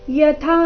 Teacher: ಇಲ್ಲಿ ಥ ಮಹಾಪ್ರಾಣ ದೀರ್ಘ